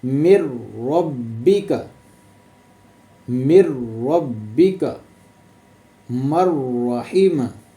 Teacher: मिलाना तो है लेकिन बिला गुन्ना